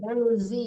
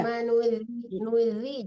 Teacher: jangan zai tapi zal, lembutkan zalnya